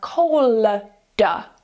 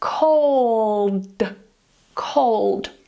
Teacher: ' Cold', 'cold' - this one's a little bit trickier because you have that 'duh' coming after, so you're not going to release this as 'collduh', we're not going to turn it into a 'Light L', you keep your tongue up at the top of your mouth and then you release it as a 'duh'